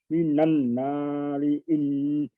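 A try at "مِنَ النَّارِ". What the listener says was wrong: Panjangin Pak. Nannya itu yang panjang Pak. Nannya yang dipanjangkan. Minan di situ. Nannya dipanjangkan.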